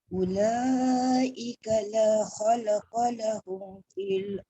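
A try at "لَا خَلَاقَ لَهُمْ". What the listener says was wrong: Khola panjang bunda. panjang.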